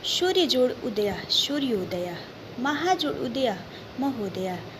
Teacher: अगला पद है सूर्य जोड़ उदय सूर्योदय, महा जोड़ उदय महोदय, यहाँ ह्रस्व उ आया है। अ या आ के बाद ह्रस्व उ आया है तो ओ बना है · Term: गुण संधि